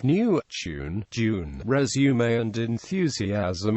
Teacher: RP does not have y dropping after n t d z and Theta